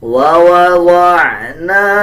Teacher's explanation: نون کے اوپر زبر ہے اس کے بعد الف ہے تو اس کو 1 سیکنڈ لمبا کریں گے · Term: حروف مدہ